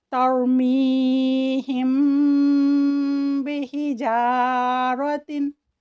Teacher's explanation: अगर मीम साकिन के बाद बा मुतहर्रिक आ जाए तो मीम साकिन पर आवाज़ को ठहराते हुए खैशूम से अदा करेंगे और 2 हरकत या 2 सेकंड का वक्त देते हुए लंबा करेंगे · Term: इख़फ़ाए शफ़वी